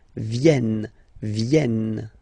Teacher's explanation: this classic ending ENT for the third person of the plural is here, but phonetically it doesn't exist, so you don't pronounce it